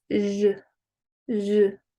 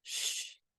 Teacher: the zh is voiced, whereas the sh is voiceless